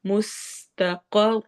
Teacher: سین میں سٹی والی آواز، قوف کو موٹا کرنا ہے ، مستقر، را کو بھی موٹا پڑھنا ہے اور آگے واو